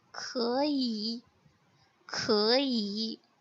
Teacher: तो second example है खई. सो फर्स्ट सिलेबल की थर्ड टोन सेकंड टोन में कन्वर्ट हो गई है, सो इसकी प्रोनाउंसिएशन हो जाएगी इट्स लाइक खई खई.